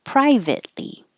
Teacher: Don't release the T. Private, hold it, ly.